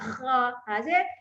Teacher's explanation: Dan ada kha ya, satu-satunya huruf yang bunyi kahak macam kawan kita buatlah kha. Kita kena buat ya kha bunyi kahak, satu je huruf ni saja.